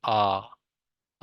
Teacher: विवृत स्वर आप लोगों का होगा, इसमें आप लोगों का मुंह पूरा खुलता है, जैसे आ जैसे ही आप करेंगे तो आपका जो मुख होगा वो पूरा का पूरा आप लोगों का खुलेगा।